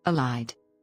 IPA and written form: ɪˈlaɪd (Elide)